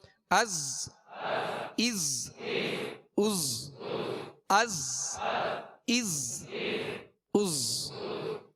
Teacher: زا کو سختی سے ادا کرنا ہے، سیٹی کی آواز ہوگی